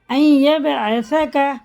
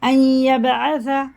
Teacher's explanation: رواں میں اس نون کو نہیں پڑھیں گے، اس کی جگہ یا کو لگا کے پڑھیں گے